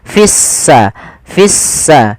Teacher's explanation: sinnya berharakat tasdid seakan-akan s-nya dua · Kita namakan di sini, kami lupa nulis, alif lam syamsiyah, yaitu alif lam yang kita tulis tapi tidak kita baca, sehingga di sini lamnya ditandai dengan warna abu-abu. Artinya lamnya dianggap tidak ada, sehingga langsung diidghamkan ke huruf sin, sehingga sinnya berharokat tasdid, seakan-akan s-nya dua